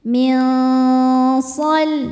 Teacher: Cara bacanya nun disamarkan menuju shad disertai dengungan. Dengung dan kesamarannya sama besar. Milsal. Lam sukunnya disebut dengan lam mutlak. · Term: ikhfa hakiki awsat